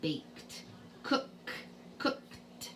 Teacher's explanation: You write a D, but it sounds like a T.